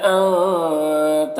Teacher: انگتھا کے نون میں اخفا ہوگا، نون کی آواز کو ناک میں چھپا کر پڑھیں گے